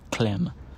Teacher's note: the voicelessness of the /k/ sort of spreads into the adjacent lateral, and the lateral approximant itself becomes voiceless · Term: voiceless L